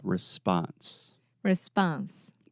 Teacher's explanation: in the word response in American English, the second sound is the ah